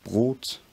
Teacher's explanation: a bilabial consonant some kind of ra like sound a vowel and then a dental or alveolar